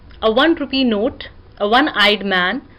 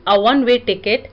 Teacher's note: O is a vowel letter but produce wa sound, that is basically a consonant sound